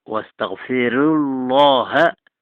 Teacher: احنا ماشيين على ترقيق الراءات كلها، يبقى الأزرق هنا معانا له فيها الترقيق